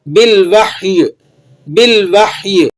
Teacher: لیکن ہم اسے جب وقف کریں گے تو یا کی حرکت کو ختم کریں گے، یا کو پھر بھی ہم نے ظاہر کرنا ہے۔ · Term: یا کی آواز